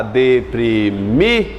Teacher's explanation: Qual é a mais forte? Mi. Portanto, ela é uma Oxítona.